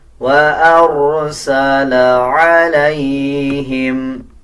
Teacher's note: اب جیسے را سے پہلے والے الفاظ کے اوپر زبر ہے تو اب را کو پر یعنی موٹا پڑھا جائے گا